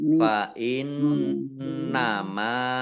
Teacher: nun tasdid, ya, dibaca gunnah atau mendengung, ditahan 2 harokat